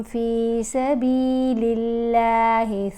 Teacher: یہاں پر اللہ کی لام کو ہم نے باریک پڑھا، کیونکہ یہاں اس لام سے جو پہلے متحرک لیٹر ہے وہ بھی لام ہے اور اس کے نیچے زیر ہے۔